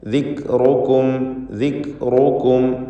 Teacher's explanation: മറിച്ച് ദിക്റുക്കും, ദിക്റുക്കും എന്ന് ഉച്ചരിക്കുക. റാഇന് തഫ്ഖീം കൊടുക്കണം. തടിപ്പിച്ച് സ്വരഭാരത്തോടെ ഉച്ചരിക്കുക.